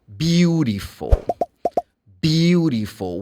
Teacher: When I say beautiful, participle or participle, the T sounds like D.